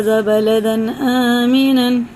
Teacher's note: पूरे 'रब्बल' को मुंह भरकर, गाढ़ा करके पढ़ा जाता है